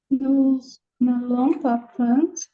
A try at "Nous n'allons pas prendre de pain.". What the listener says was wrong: n'allons, attention, ne prononce pas le S final de nous. Le S final en français n'est presque jamais prononcé, d'accord?